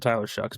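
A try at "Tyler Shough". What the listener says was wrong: Yeah, you said that like he had a K at the end of his last name. But it's GH at the end.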